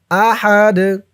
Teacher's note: যখন এই তানবিন সাকিন হয়ে যাবে তখন এই দালটা জজমওয়ালা দাল হয়ে যাবে। জজমওয়ালা দাল হওয়ার কারণে এই দালটা কলকলার হরফ হয়ে যাবে। ধাক্কা দিয়ে পড়তে হবে।